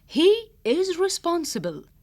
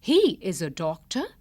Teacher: the word is has no emphasis and so it is pronounced as s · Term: weak forms